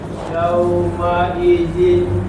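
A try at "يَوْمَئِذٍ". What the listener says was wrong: Zi. Bukan zin, zi. Ya, zi. Zi.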